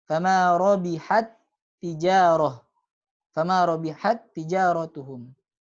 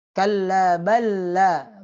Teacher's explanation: Huruf yang pertama dimasukkan ke huruf yang kedua dibaca tanpa gunnah kecuali pada huruf nun dengan mim. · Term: mutamathilain